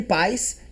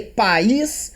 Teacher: na primeira há um ditongo decrescente, enquanto na segunda há um hiato